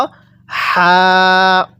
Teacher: এই হাটা উচ্চারণের সময় মুখ দিয়ে আমরা হালকা বাতাস বের করব।